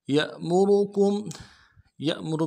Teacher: یأمر میں یا کو حمزہ کے ساتھ ملائیں گے، حمزہ میں جھٹکا ہوگا۔ یأمر میں را کو موٹا کریں گے اور کاف کو میم ساکن کے ساتھ ملانا ہے، میم ساکن میں غنہ کریں گے۔